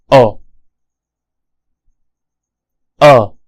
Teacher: as you can hear this is an open and short vowel